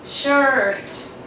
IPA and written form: ʃɜːt (shirt)